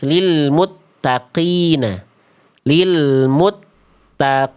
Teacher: Qof ketika kasrah itu tafhim nisbi. Qof tidak dibaca betul-betul tebal ketika kasrah.